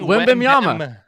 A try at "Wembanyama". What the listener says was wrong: It's N, not M, so it's Wembanyama.